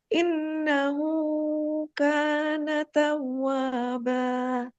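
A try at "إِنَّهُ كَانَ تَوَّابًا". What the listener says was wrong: Nah, itu tapi kepanjangan. Hu-nya cuma seayun aja. Pertama, nun tasydid itu ditahan. Bukan inna, bukan inna, tapi innahu ka. Hu-nya segitu aja. Innya tahan lebih lama, hu-nya seayun saja. Innahu kana taw.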